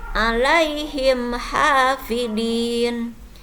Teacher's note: Idhar itu kan selain dari huruf mim dan huruf ba. Di sini mim matinya menghadapi huruf ha, maka bacaannya tidak boleh didengungkan.